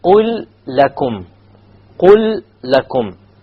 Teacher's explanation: There's a silent lam followed by a lam with a fatha on it. Therefore, there will be a full idgham here.